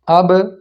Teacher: اب، اس کو اب نہیں پڑھیں گے، ہونٹ جڑے نہیں رہیں گے، جڑ کے الگ ہو جائیں گے، آواز رک کے آگے نکل جائے گی